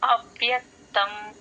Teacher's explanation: కాదు అవ్యక్తం ఆ కి వ ని జాయిన్ చేసి అవ్ ఔ అన్నప్పుడు మీ పైన టీత్ కింద లిప్స్ మీదకి వస్తేనే ఆ అవ్ అనేది కరెక్ట్ గా ఆ స్ట్రెస్ కరెక్ట్ గా వినిపిస్తుంది.